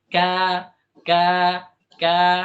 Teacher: huruf alif di sini tipis mengikut huruf alkaf